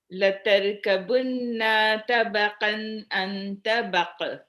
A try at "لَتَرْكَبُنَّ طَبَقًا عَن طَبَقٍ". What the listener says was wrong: this is غنة not ألف لتركبن طبقا عن طبق no ألف لتركبن طبقا عن طبق